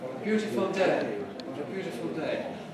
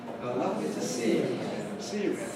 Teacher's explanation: All of them have to have a fall.